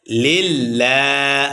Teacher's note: এক আলিফ টান হবে মাদ্দে তবা এবং লাম চিকন হবে লিল্লাহ লামের উপরে খারাজবর আসার কারণে এক আলিফ টান হবে লিল্লাহি